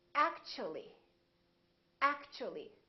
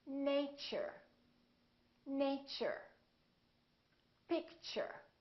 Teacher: the T becomes kind of a CH sound